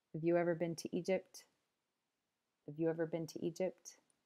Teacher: the H disappears and then you just hear of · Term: weak forms